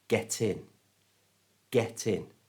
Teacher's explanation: And in does start with a vowel sound, I. So we move the T sound to the front of the vowel sound.